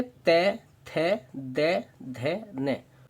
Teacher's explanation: जैसे हम बोलेंगे तै, थै, दै, धै, नै, तो हमारी जीभ हमारे दांतों को टच कर रही है, इसलिए बोलते हैं इन्हें दंतव्य